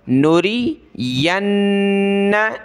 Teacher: یا کو نون کے ساتھ ملائیں گے، نون پر ہم نے غنہ کرنا ہے